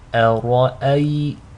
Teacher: the ra is heavy, again because it's maftuh, takes a fatha, but is flanked by 2 hamzas, both of which are light. So to recite this correctly, make sure the hamza is light, the ra is heavy, and the second hamza is light.